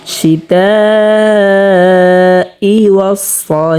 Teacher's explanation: যেমন শিতাই ওয়াস-সাইফ, এখানে 4 আলিফ পরিমাণ টানিয়া পড়তে হবে। এবং এখানে যে হাটা আমরা দেখতে পাচ্ছি, হাটাকে আমরা 2 নাম্বার মাখরাজ হতে, হলকের মধ্যখান হতে স্পষ্টভাবে উচ্চারণ করব। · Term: মদ্দে মুত্তাসিল